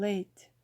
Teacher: Vowel sounds are all voiced and may be single, like as in let, or a combination involving a movement from one vowel sound to another, like a, as in late. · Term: diphthongs